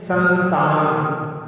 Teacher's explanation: तो कचटता, तावर्ग यदि आगे होता है तो जैसे अपन बोलते हैं संतान, सा के ऊपर बिंदी और आगे ता है तो वो बिंदी ना के रूप में परिणत हो जाती है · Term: अनुस्वार